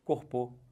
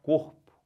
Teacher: Então, você pode forçar à vontade no cor que vai ficar certo. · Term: paroxítona